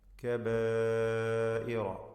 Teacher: കബായിറ ഇതിൽ വരുന്ന ദീർഘം മദ് മുത്തസിൽ വാജിബ് എന്ന ദീർഘമാണ്. 4-5 ഹറക്കത്തിൻ്റെ അളവിൽ അലിഫിനെ ദീർഘിപ്പിക്കൽ നിർബന്ധമാണ്.